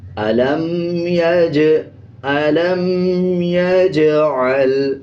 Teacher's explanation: أَلَمْ يَجْعَلْ، جیم کے اوپر جزم ہے، جزم کا مطلب پچھلے الفاظ کے ساتھ ملانا، اور جب جیم کے اوپر جزم آ رہا ہو تو قلقلہ کیا جاتا ہے